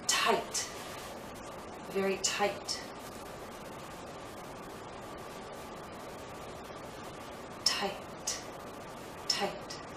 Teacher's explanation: I have this vowel sound but because the T follows it's shorter